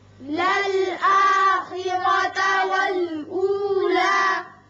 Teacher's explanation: یہاں را پر کریں گے اس لیے کہ اوپر زبر ہے. وقت کی صورت میں لا کھڑا پڑیں گے، اور وصل کی صورت میں بھی اتنا ہی ہوگا، طویل نہیں کریں گے.